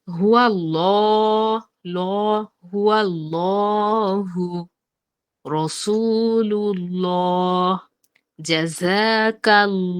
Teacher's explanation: আল্লাহু শব্দের ডানে অর্থাৎ পূর্বে যদি জবর বা পেশ থাকে তাহলে লামকে পোর বা মোটা করে পড়তে হয়। অর্থাৎ জবর আর পেশ এই দুটি আল্লাহ শব্দের লামকে মোটা করে উচ্চারণ করাবে